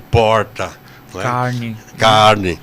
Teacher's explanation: Que é um R que a gente chama retroflexo, aquele R que a gente fala e quase se engasga